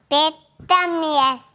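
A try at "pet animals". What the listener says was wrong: பெட் அனிமல்ஸ். ஆமியல்ஸ் இல்லை, அனிமல்ஸ்.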